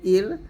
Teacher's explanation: র সাকিনের ডাইনে জের আসলে পাতলা